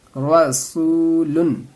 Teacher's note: یہاں پہ واو مدہ ہے، واو ساکن سے پہلے پیش آ رہا ہے، اس کو تھوڑا سا کھینچنا ہے، زیادہ نہیں کھینچنا رہتا ہے